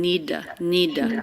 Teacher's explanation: it's a flap it's not a true t sound it's more like a d